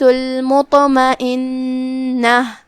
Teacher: یہاں حرف النون ہے اور اس پہ تشدید ہے. 2 حرف کے مقدار میں ہم نون کو پڑھیں گے. آخری میں جو کہ یہاں تائے مدورہ ہے ہم اس پہ روکیں گے تو ہم ہا سے روکیں گے.